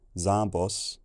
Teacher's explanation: The Blue Culture absorbed their M into the vowel, creating a long nasal vowel, Zambos. And then, as nasal vowels often do, it took a more back tongue position and lip rounding.